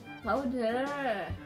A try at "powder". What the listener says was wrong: Yeah, you want to add that E into it, not the O. E.